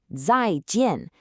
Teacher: Notice how both characters have that strong falling fourth tone. It's very decisive and clear. Feel that sharp downward motion in your voice.